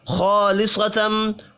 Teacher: خا کو اور صاد کو بھی پر پڑھیں گے، الف مدہ کو ایک الف کے برابر کھینچ کر پڑھنا ہے، میم مشدد پر غنہ کریں گے۔